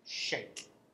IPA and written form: ʆeɪk (shake)